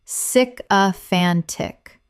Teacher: Four syllables with the stress on the third